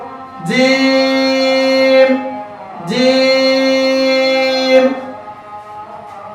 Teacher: জিহ্বার মধ্যখান তার বরাবর উপরে তালুর সঙ্গে লাগিয়ে জিম হরফটি উচ্চারিত হয়। জিম হরফটি পড়ার সময় আওয়াজ শক্ত হবে, চিকন হবে, নিচের দিকে দাবিতে হবে, বাতাস বন্ধ, আওয়াজও বন্ধ।